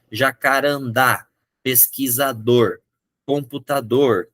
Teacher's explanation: Eu pronuncio a palavra, ela pode ter acento ou não. A sílaba mais forte está no final. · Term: oxítona